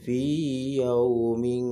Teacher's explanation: ya sukunnya tetap dibaca panjang, tidak termasuk bacaan idgham mutamathilain.